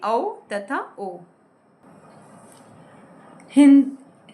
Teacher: वे वर्ण जो कंठ और होठों की सहायता से बोले जाते हैं, उन्हें कंठोष्ठ्य वर्ण कहते हैं। जैसे औ तथा ओ।